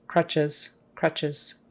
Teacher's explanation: the final s is a z sound